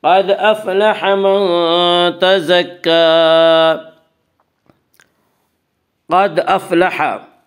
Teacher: قاف کو پر پڑھیں گے، قاف حروف مستعلیہ میں سے ہے